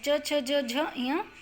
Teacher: जब इनका उच्चारण करते हैं तो वायु जो है तालु से टकराती है।